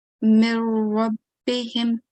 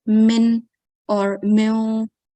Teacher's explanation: You have to merge into Ra Mushaddad, and none of the nasal sound should be heard.